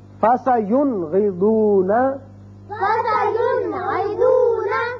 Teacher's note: نون ساکن کو ہم نے ظاہر کر کے پڑھا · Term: اظہار حلقی